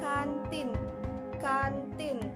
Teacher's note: dihasilkan dengan cara menempelkan ujung lidah pada gusi untuk menghambat udara dan udara dikeluarkan melalui rongga hidung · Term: konsonan nasal alveolar